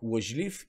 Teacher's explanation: при лъжлив изговаряме а но се пише ъ защото ъ-то което съм маркирал в момента не е под ударение